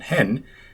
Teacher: Han, the Swedish word for he, doesn't generally get reduced to hun, like it inevitably would in English.